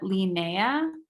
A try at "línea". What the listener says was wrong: So the emphasis is here. You see that accent mark? So you have to emphasize it there.